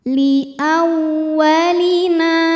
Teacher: li agak ngebentak sedikit ya Li hukumnya adalah Mad thobii ziri sebab ada Alif yang didahului harakat fathah maka cara bacanya Nun dibaca panjang dua harakat